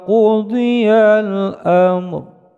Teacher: Ro'nya disukunkan karena kita berhenti ada tanda waqaf mutlaq.